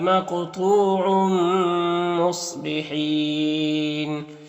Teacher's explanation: یہاں پر تنوین کے بعد میم حروف یومن میں سے تو ادغام ناقص ہوگا